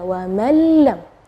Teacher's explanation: nunnya tidak ada atau kita dibilang idgham ke huruf berikutnya dan gunahnya tidak ada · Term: idgham bila ghunah